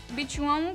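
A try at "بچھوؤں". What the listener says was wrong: बिछुआओं नहीं है, बिछुओं।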